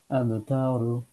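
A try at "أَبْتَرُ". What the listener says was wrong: তাতে স্লাইড টান হয়ে গেছে, হ্যাঁ।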